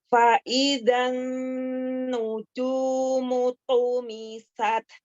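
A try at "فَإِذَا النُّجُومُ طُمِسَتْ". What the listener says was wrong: Agak sedikit memanjangkan harokat pada zalnya, jangan langsung masuk ke nun tasydid. Zan, jadi zan, jangan zan, langsung fa'idzan nujumu tumisat.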